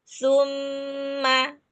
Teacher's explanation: huruf-nya ada di ujung lidah bertemu dengan ujung gigi seri atas seperti huruf dzal. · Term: Makhraj tsa